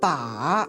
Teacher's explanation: The third falls and then rises.